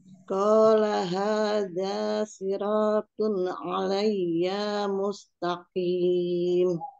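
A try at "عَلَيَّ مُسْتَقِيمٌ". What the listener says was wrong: Alayya ya-nya jangan dipanjangkan,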